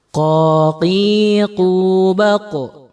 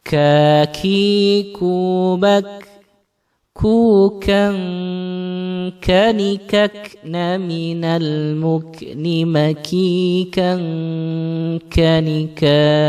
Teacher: Jadi kalau qaf naik lidah kita, kalau kaf turun lidah kita.